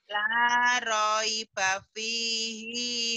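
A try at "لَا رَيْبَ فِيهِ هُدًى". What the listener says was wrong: dibaca apa adanya hinya pendek Kenapa panjang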